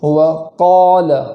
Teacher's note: وقال کے قاف کو اس طریقے سے پور پڑھیں گے کہ ہونٹوں کا سہارا نہ ہو